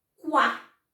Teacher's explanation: E aqui eu tenho uma semivogal, porque isso aqui não é um U, isso aqui é uma semivogal. Semivogal que representa o som de U, então é quá.